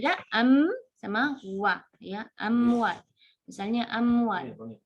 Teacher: karena mim dengan harful waw itu sudah sama-sama dari dua bibir